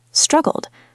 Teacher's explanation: It is a soft duh sound in the middle.